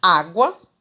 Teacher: Água, uma semivogal, uma vogal fraca, com uma vogal forte. Um U fraquinho e o A forte. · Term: ditongo crescente